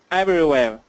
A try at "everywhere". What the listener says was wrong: More V. Everywhere.